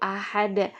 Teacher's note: Nah, ketika ahad itu ada huruf H, maka hamas dibacanya itu terasa di tengah tenggorokan itu terasa ketika pembacaan H